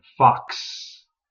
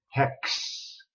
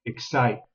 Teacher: One of the toughest sounds for many students is the X sound, because it actually consists of a couple of different sounds in combination with each other, the K and the S